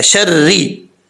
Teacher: را کے نیچے زیر ہے، را بریک پڑ جائے گا